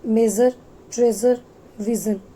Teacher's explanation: The only difference between sh and z sound is sh is voiceless and z is voiced sound. · It is voiced post alveolar fricative sound.